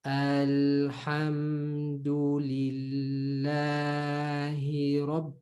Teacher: So if I'm reading slowly, Alhamdulillahi Rabb. So it's the normal mad, but it sounds extended depending on the pace. But as long as you know the general rule that it's just basically double the sound of the haraka.